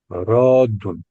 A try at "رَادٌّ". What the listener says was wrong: رادن، شد کے ساتھ ہوگا رادن، اور مفعول